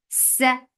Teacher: for fatha open jaws, the sound is short